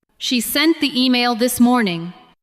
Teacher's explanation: Stress sent, email, and morning.